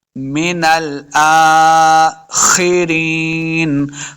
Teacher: خا کو موٹا پڑھنا ہے، خا حروف مستعلیہ سے ہے